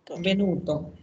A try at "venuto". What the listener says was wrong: Ojo, ojo a las dobles falsas, no es venuto, es venuto.